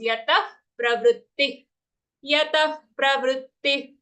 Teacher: both the visargas after yata and pravritti, they are fa-like sounds.